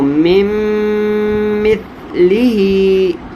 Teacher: میم اور نون کا ایک حرف بنا دیا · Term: ادغام